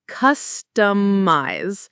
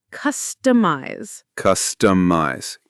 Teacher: Customize is pronounced customize. The stress is on the first syllable, cuss, and the i in eyes is a long i sound like an ice.